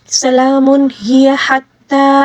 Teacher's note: ہا کو بالکل حلق کے درمیانی حصے سے ادا کریں گے